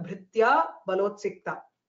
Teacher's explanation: Everywhere brithyaha balotsiktaha bhaktaha, all three visarga have been elided here. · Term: lupta visargatvam